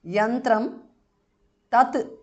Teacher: anuswara changes to n again which is the nasal of the ta varga